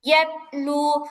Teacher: ইয়াতেলু এখানে কলকলা হবে না, ইয়াতে এরকম মানে ধাক্কা লাগবে না